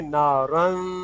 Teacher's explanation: وہ را کے ساتھ ناک میں آواز رکھیں گے